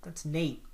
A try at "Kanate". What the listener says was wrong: Yeah, but it has a K in front of it, so it's Kanate. It's okay, it's Kanate.